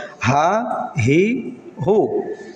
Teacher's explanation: একেবারে গলার নিচ থেকে, অর্থাৎ হলকের কণ্ঠনালী বা শ্বাসনালীর একেবারে নিচ থেকে উচ্চারিত হবে হা হি হু।